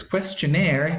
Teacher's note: questionnaire is normally accented on the last syllable